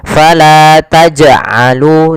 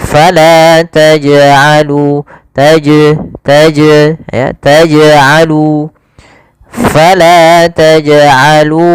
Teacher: Maka jangan kita baca dengan bacaan taj'alu yang artinya dia tidak mantul. Maka harusnya jim harus mantul. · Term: qalqalah